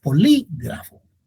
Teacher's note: las palabras esdrújulas tienen la sílaba tónica en antepenúltimo lugar, como polígrafo.